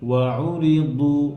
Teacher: দু মোটা, হ্যাঁ, দত হেভি করবেন যেন ওয়াউরিদু দালের মতো না হয়